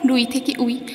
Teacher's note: এখানে র ব্যঞ্জনধ্বনি, কিন্তু উই শব্দে সেটি আর থাকছে না, তাই এটি আদি ব্যঞ্জন লোপের উদাহরণ